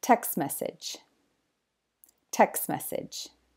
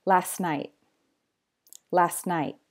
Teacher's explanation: because it can be difficult for the mouth to pronounce three consonant sounds together to say F often English speakers just drop the T